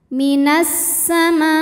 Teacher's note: Kemudian ada hukum alif lam syamsiyah, sebab alif lam menghadapi huruf syamsiyah yaitu sin. Cara membaca alif lamnya adalah tidak dibaca atau disebut dengan idgham syamsi, dileburkan ke sin.